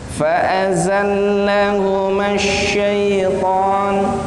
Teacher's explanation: Tapi kalau za dia lebih tipis suaranya